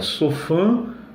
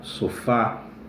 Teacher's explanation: O acento agudo ele serve justamente para mostrar ao falante que o timbre da vogal tônica é um timbre aberto